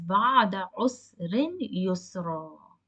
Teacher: For example, if you read ba'ada usrin yusran, you cannot read or stop ending with yusran with the tanween fathatain. You have to pronounce the long vowel given after the ra. So it will be read as ba'ada usrin yusra, and you will prolong it with two counts. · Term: long vowel alif